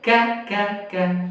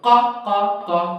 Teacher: কাফটা হলো জিহ্বার গোড়া থেকে একটু সামনে কা কা কা, আর কফটা হলো জিহ্বার গোড়া উপরের তালু ক ক ক